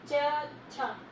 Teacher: च, छ, यानी कि आपकी जीभ है जो ऊपर जो तालु है वहां टच करके जो शब्द निकलते वो हमारा तालव्य कहलाते